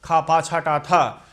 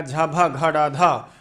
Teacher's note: इनके उच्चारण में हमेशा अधिक प्राण वायु की आवश्यकता होती है कौन-कौन से वर्ग का दूसरा और चौथा अक्षर और सल वर्ण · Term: महाप्राण